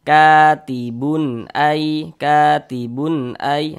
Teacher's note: Karena dia izhar maka dibaca jelas, tidak berdengung.